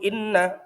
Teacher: ada bacaan gunnah karena nun bertasydid